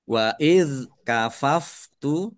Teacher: dalal sukun ya jangan dipantulkan.